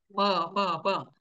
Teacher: दोन उच्चारण स्थान आहेत मुखही आहे आणि नाकही आहे ब व नाक दाबून म म्हणण्याचा प्रयत्न केला तर उच्चारण असं होतं ब आणि तोंड दाबून नाकाने म च उच्चारण करायचा प्रयत्न केला होते · नाक दाबून म म्हणण्याचा प्रयत्न केला तर उच्चारण असं होतं, ब, ब, ब. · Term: मुखसहित नासिका